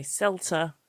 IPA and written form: ˈsɛltə (CELTA)